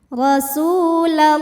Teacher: Maka dibacanya tebal, pangkal lidah dinaikkan. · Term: tafkhim